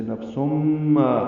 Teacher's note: تنوین کے بعد میم آنے کی وجہ سے نفسم، یہ ادغام ناقص ہے، غنہ ہوگا